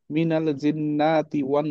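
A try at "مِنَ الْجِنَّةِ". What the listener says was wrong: না, টান হবে না। মিনাল জিন্নাতি।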